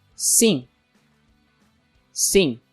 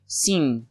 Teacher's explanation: notice how the M at the end of the word is not as explosive as it would be in English so I don't go all the way to say sim instead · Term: nasal sound